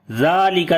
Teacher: لام کے اوپر صفت توسط کریں گے، آواز کو ہلکا سا کنٹینیو کریں گے اور ہلکا سا بند کر دیں گے ، درمیانی پوزیشن شدت اور رخاوت کی۔ واو یہاں پر لین